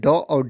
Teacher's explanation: ड और ढ है तो यह क्या है दोस्तों इसका उच्चारण स्थान मुर्धा है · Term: मूर्धन्य व्यंजन